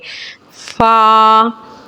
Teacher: होठ के तर हिस्से से अदा होता है फा ऊपर के दांतों के किनारे और नीचे होठ के तर हिस्से से अदा होता है